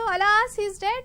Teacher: my higher pitch is showing that i'm happy that he's dead but it is an expression of sorrow you